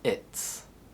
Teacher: the z sound is devoiced after it to complement the unvoiced t sound. So it is becomes its.